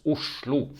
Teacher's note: the SL is usually pronounced as a shl with an SH in English · the O is pronounced as an U, and this is a sound that we don't really have in the English language. It's basically the beginning of a W sound.